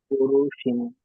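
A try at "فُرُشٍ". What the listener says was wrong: ফরু টান হবে না, ফরুশিন,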